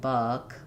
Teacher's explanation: One of the things you can notice is that rounding the lips is important in the vowel versus I'm very unrounded, nothing's happening in my lips, and my tongue is just resting in the bottom. My jaw is a little bit more open, versus Actually, I would say my jaw is somewhat open for the as well, but the back of my tongue is much higher for The front of my tongue is down. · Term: schwa